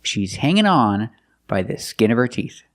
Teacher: You hear the possessive her pronounced by the skin of her. You don't really hear the H because the word her is not stressed.